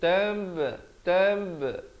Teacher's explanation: Bila nak berikan pantulan pada huruf ba, pepeskan mulut.